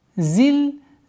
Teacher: При остановке фатха аннулируется, остается у нас алиф в размере двух огласовок.